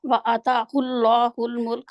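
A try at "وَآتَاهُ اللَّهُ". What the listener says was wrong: ابھی بھی آپ عطا کہتے ہیں، کیسے عطا ہے؟ آگ بھی لمبا کرنا ہے، تا بھی لمبا کرنا ہے.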